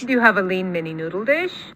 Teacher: She goes way up high for the question at the tail end, and usually there's some sort of low star before it for a yes/no question in English. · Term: high combo